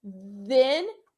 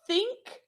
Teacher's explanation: Say then, they move. So if your vocal cords move when you say then, it's a voiced. And if they don't move, like think, it's unvoiced